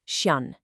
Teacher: For chien, it's a nasal sound at the end. You literally do not pronounce the N.